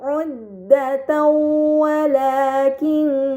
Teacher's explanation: Maka fatahtain dibaca secara melebur dengan gunah yang dipanjangkan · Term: idgham bighunah, idgham bi gunnah